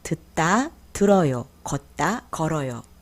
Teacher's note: The final consonant 'ㄷ' is changed to 'ㄹ' in front of a vowel.